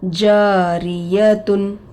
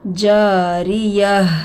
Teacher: گولتا پر وقف کرنا ہے تو وہ ہائے ساکینہ بن جاتی ہے